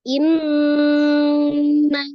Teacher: Maka dia dinamakan matobi alif, maka nanya panjangnya 2 harokat. Setelah nun tasdidnya tadi digunakan, nanya dibaca 2 harokat.